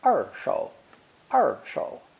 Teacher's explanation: the mandarin r sound is like the g in prestige or the s in television except that the tongue curls back much farther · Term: retroflex r sound